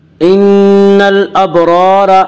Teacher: ان الابرار، الف مدہ، الف ہمیشہ مدہ ہوتا ہے، الف سے پہلے ہمیشہ زبر ہوتا ہے، الف مدہ کو 1 الف کے برابر کھینچ کر پڑھیں گے · ان الابرار، الابرار کے را کو پر پڑھا جائے گا، اس کا قاعدہ ہے کہ را کے اوپر زبر اور پیش آئے تو را کو پر پڑھا جائے گا، را کے نیچے زیر آئے تو را کو باریک پڑھا جائے گا، را کے اوپر زبر اس سے را کو پر پڑھیں گے